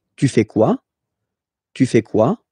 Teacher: you definitely need to raise your voice at the end